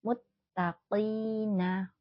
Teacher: jangan tertukar dengan huruf Kaf ya muttaqina qof itu hurufnya tebal muttaqina kasrah diikuti Ya Sukun merupakan Mad thii bacanya dua harakat